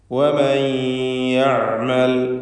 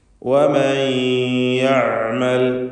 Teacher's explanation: തൊണ്ടയുടെ മധ്യമാണ് ഐനിൻ്റെ മഖ്റജ്. വസത്തുൽ ഹൽഖ്, ഈ ഐനിൻ്റെ ഉച്ചാരണത്തിൽ തവസ്സുത്ത് എന്ന സിഫത്തും അതിനുണ്ടായിരിക്കുന്നതാണ്.